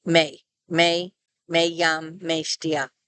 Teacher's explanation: the diphthong is not very strongly pronounced, although it is still heard at the end of a word.